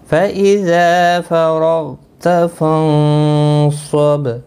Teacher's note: با ساکن پر قلقلہ ہوگا وقف کی صورت میں